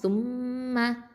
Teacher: இந்த ச அப்படிங்கிறது வந்து இது தரஃபுலிசா நுனினாவை எழுத்து. மீமில் வந்து ஷத்தா இருக்கிறதுனால இது அக்கமல் குன்னா, நிறுத்தி வச்சு குன்னா செஞ்சு ஓதணும்